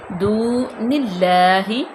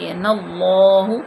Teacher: اللہ کے لام کو پر نہیں پڑھا گیا کیونکہ اللہ کے لام سے پہلے زیر ہے